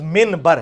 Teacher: با, نون ساکن تنوین کے بعد آ جائے تو نون کو وہ میم بنا دے گا